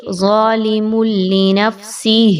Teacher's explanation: یہاں پر تنوین کے بعد لام آ رہی ہے، ادغام ود آؤٹ غنہ کیجئے. یہاں پر آپ نے لام کو تشدید کی علامت کے ساتھ، یہ ڈبلیو کی علامت ہے، اس کو دیکھنے کے بعد آپ نے یہاں پہ غنہ نہیں کرنا، ظالم ایسے نہیں پڑھنا، بلکہ ظالم لنفسہ.